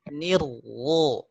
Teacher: Hirwo, ni terasa tipis ringan di rongga mulut. Ni masuk ke ro, suaranya jadi naik, jadi tebal.